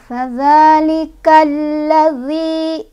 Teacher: lam bertasydid terdiri dari dua huruf lam. Dibacanya langsung dimasukkan ke huruf lam, ditekan ya. Fadzalikallazi, zi matobi'i, karena ada ya sukun didahului oleh huruf berbaris kasrah.